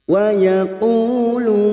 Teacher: Ada mad yang bertemu dengan huruf hidup dan dibaca wakaf mad arid li sukun. Mad arid li sukun kita samakan 4 harokat.